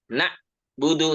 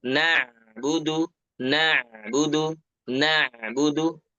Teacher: setelah huruf nun ada huruf Ain maka itu alirkan sedikit ya jangan diputus